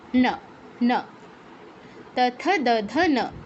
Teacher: ত থ দ ধ ন, ওই যে দাঁতে স্পর্শ করবে, উপরের পাটির দাঁতে জিহ্বাটা স্পর্শ করবে। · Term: দন্ত ন